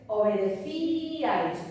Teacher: Primero un hiato y luego un diptongo, pero no tengo un triptongo. Tengo tres vocales que están al ladito, pero no son un triptongo, porque no son una sola sílaba.